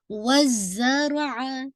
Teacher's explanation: را بھی آپ کا ہیوی ہے، زائی پہ آپ کی بزنگ سی ساؤنڈ ہوگی. آپ کی جو زائی سین اور صاد، اس کا جو مخرج ہے آپ کی ٹپ آف دا ٹنگ ہے نا، یہ آپ کی دانتوں کے سامنے کے دانتوں کے پیچھے رہے گی.